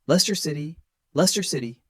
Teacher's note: The middle letters CS are almost silent. So it's L E S T E R.